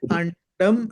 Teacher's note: డ అన్నది టవర్గంలోని అక్షరం కాబట్టి టవర్గంలోని పంచమాక్షరము ణ రావాలి. కాబట్టి అండం అయింది అది.